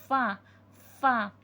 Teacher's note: दांत नीचे वाले होंठों के तर हिस्से से लगेंगे तो हुर्फ़ फ़ा अदा होगा